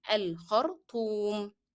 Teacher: remember to make ta with a hard sound and lengthen the sound of u, as there is a combination.